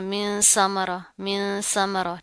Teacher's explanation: अब यहाँ पर क्या नून साकिन है, उसके बाद हरूफे इख्वा में से सा आ रहा है, इसको आपने सा नहीं करना, मिन समरा, मिन समरा, ठीक है। सा के अंदर सीटी नहीं पाई जाती, नरम हरूफ में से है।